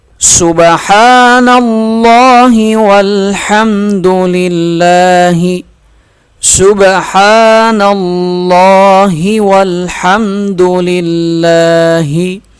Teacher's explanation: با پہ قلقلہ ہوگا، صبح، ہا کو ایک الف کے برابر کھینچ کے پڑھیں گے، نون لام کے ساتھ مل جائے گا اور لام موٹا پڑھا جائے گا، ایک الف کے برابر کھینچ کر پڑھا جائے گا۔